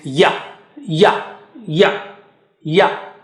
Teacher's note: The middle of the tongue touches the palate or roof of the mouth, and you say ya, ya, ya, ya.